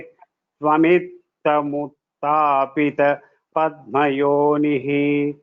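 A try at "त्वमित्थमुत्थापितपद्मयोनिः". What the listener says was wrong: Only the Mahapranas in the second line you can give more stress. Swamithamutthapita.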